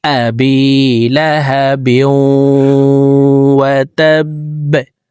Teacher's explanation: তো বার নিচে দুই জের আছে, তো এই দুই জেরওয়ালা বার বাম পাশে তাসদিদওয়ালা ওয়াও, অর্থাৎ ইদগামে বা গুন্নার হরফ ওয়াও আসছে। এই কারণে এই তানবিনওয়ালা বাটি তাসদিদওয়ালা ওয়ার সাথে গুন্নার সহিত মিলাইয়া পড়ব। আবি লাহাবিউ, ওয়াও জবর ওয়াহ, তা বা জবর তাব, ওয়া তাব, বা জবর বা, ওয়াতাব্বা, বা কলকলার হরফ নিচের দিকে ধাবিত করে ধাক্কা দিয়ে বাকে সাকিন করব।